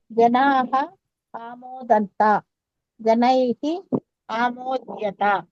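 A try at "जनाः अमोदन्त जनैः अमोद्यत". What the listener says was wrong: కాదది అమోదంత, సంతోషించారు. ఓకే, ఆ దీర్ఘం ఉండదు.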